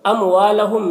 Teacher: اموالہم میم میں اظہار شفوی ہو رہا ہے، اسے جلد پڑھیں گے. ہم کے میم میں بھی اظہار شفوی ہو رہا ہے.